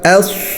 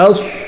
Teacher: صاد جو ہے وہ سین کی طرح ہی نکلے گا لیکن موٹا ہوگا